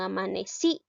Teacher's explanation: En este caso la i lleva la mayor fuerza de voz